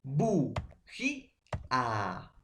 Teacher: es la vocal cerrada que lleva fuerza de voz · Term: vocal cerrada tónica